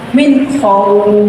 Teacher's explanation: wawul sukunnya dibaca panjang sekali